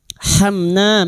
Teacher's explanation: Mim sukun bertemu nun. Idhar syafawi. Mim sukun dibaca jelas tanpa mendengung. Hamna na fathah diguti alif dua harakat mad thabi'i.